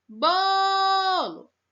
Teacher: a sílaba que que a gente mais esticou o som foi o BO então ele é a sílaba tônica